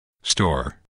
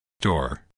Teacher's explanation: Natives simply don't have aspirated p, t, k after S in the same word. You might think of it as the strong English S requiring so much breath that there isn't enough left over to aspirate a following sound in the same word.